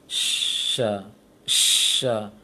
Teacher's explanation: Menyebarnya suara di sela-sela gigi ataupun terasa di bibir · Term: tafashi